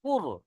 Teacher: তাই রটা পুর করতে হবে, মুখটা গোল করতে হবে। কফ র পেশ কুর।